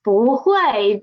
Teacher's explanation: when buu is before a fourth tone syllable it will change to second tone